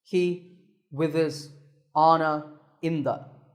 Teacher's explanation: All the other words are grammar words, that is, they just give grammatical information, pronouns, prepositions, and conjunctions. We don't stress these words. Instead, we say them quickly and softly.